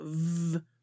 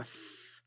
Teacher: voiced and unvoiced fricatives